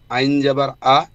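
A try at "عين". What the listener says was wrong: না, প্রথমটা হচ্ছে হামজা।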